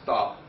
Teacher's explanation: we say the word stop, we have a T that's unaspirated